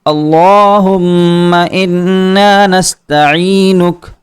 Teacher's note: عین کے نیچے زیر ہے، تو یہاں لفظ یا کو حروف مدہ میں شمار کیا جائے گا اور آواز کو تھوڑا کھینچا جائے گا